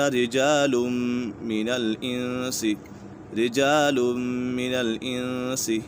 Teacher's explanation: من الانس، یہاں پر اخفاء کا قاعدہ لگ رہا ہے، نون ساکن کے بعد سین حروف اخفاء میں سے ہے تو یہاں غنہ ہوگا